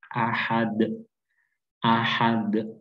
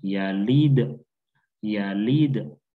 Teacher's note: dal yang bersukun. Maka kita harus menjadikan dia bacaan qalqalah atau kita pantulkan